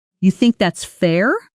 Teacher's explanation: First, genuinely curious, rising at the end. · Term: rising intonation